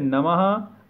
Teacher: विसर्ग का जो उच्चारण है वो हा के समान होता है